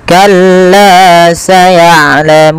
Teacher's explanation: panjangkanlah 2 harokat karena ia mad tabi'i